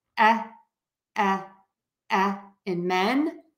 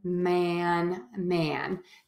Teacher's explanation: for men you can see my mouth is more closed my jaw is more closed that helps me keep my tongue a little bit higher